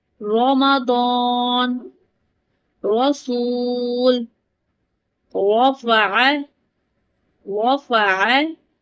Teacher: The heaviness comes from the raising the back of the tongue not from the lips. Always keep the lips relaxed. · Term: heavy